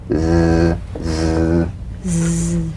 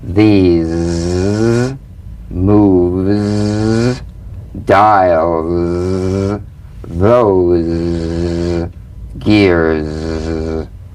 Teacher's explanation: The tip in gentle contact with the hard palate. The Z vibrates in that very small open space between the tongue and the upper teeth. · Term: voiced S sound fricative